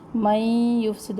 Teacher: میم کو یا سے ملانا ہے اور نون اس میں سائلنٹ ہو جائے گا